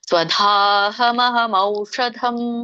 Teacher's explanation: ಮೂರ್ಧನಿಷ ಇದೆ ನಾಲಿಗೆ ಹೋಗಿ ಮೇಲೆ ಹತ್ತಬೇಕು